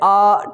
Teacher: जो बड़ा आ है वो आपका क्या कहलाता, ध्यान देना, विवृत्त स्वर कहलाता है, क्योंकि आप अगर इसको बोलोगे तो आपका पूरा मुख खुलेगा